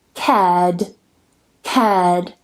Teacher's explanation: I don't pronounce the R because the following sound is a D. It's a consonant sound.